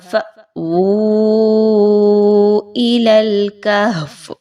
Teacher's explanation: حمزہ کے اوپر جزم کی علامت ہے، آپ نے حمزہ کو جھٹکا دیتے ہوئے پڑھنا ہے ، جھٹکے کے بغیر نہیں پڑھنا، اچھے سے واضح